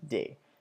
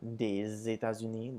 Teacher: the S makes a Z sound when it comes before vowels